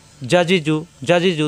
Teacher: এখন দেখুন জিম জিমের মাখরা জিব্বার মাঝখানে উপরে তালুতে জিব্বার মাঝখানে উপরে তালুতে চাপ দিয়ে